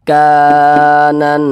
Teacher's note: Mad thi'i panjangnya itu dua harakat